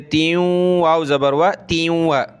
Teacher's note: تا کو واو کے ساتھ ملائیں گے, ناک میں آواز پیدا کریں گے